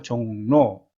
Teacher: 종로, 종의 받침이 비음이죠. 그래서 로가 노로 바뀝니다. 그래서 종로. 한번 따라해 보세요.